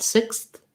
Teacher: what your tongue does there is it goes from behind the teeth for the s to sneaking between the teeth for the th you don't have to go super far out sixth sixth you